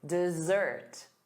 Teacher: The syllable stress is on the second syllable, da-da, dessert.